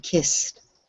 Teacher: I know it's really hard because of the way Italian is spoken, but in English, this is just kissed, and it sort of softly goes away, kissed. We don't add on the end.